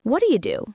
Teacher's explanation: The do you connects together and sounds like da.